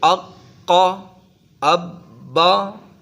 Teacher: حروف قلقلہ مشدد بھی پڑھے جاتے ہیں، اق، قا، اب، با، سختی کے ساتھ۔